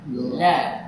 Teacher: jadi pengucapan la yang benar adalah la di sampingnya bukan di ujung lidahnya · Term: inhiraf